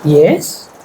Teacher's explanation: when we say yes our pitch of the voice goes up it's a question